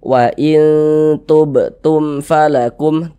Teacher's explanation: Karena dia izhar, maka dibaca jelas. Kemudian tidak berdengung. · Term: izhar syafawi